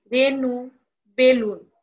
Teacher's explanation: এ ধ্বনি অবিকৃতি থাকবে অর্থাৎ সংবৃত্ত হবে এটা বিবৃতভাবে উচ্চারিত হবে না